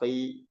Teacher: Kho ketika kasroh tetap ada isti'lanya, tebal. Khi, ya. Ketika dia fathah tetap ada ketebalannya.